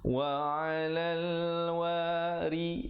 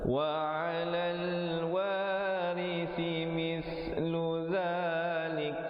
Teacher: ri-nya menjadi nipis, ri si di hujung lidah